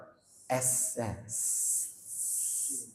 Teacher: Sin, ujung lidah bertemu dengan 2 gigi seri bawah.